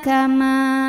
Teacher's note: Ma mad tabi'i zahiri karena ada alif sebelumnya baris fathah. Maka mim dipanjangkan 2 harokat saja.